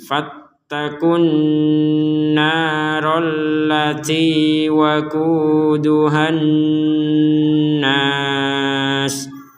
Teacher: Bertemu waw sukun, maka kita membacanya 2 harokat, fattaku. Namun ketika kata fattaku digabungkan dengan kata setelahnya maka menjadi pendek karena yang setelahnya adalah tasdid. Di sini ada alif lam kemudian tasdid, membacanya fattakun nar, langsung dimasukkan ke nun, fattakun narallati waquduhan nas.